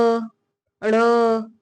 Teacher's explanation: इसके उच्चारण में जिव्या जो है काफी झटके से नीचे आती है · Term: उत्क्षिप्त वर्ण